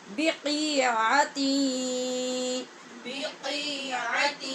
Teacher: یہاں پہ نون تنوین جو تا کی ہے اس کے بعد یا حروف یرمالون میں سے ہے یہاں پر بھی ادغام غنے کے ساتھ ہوگا